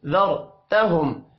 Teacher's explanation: را ساکن سے پچھلا حرف زبر والا ہے را کو موٹا پڑھیں گے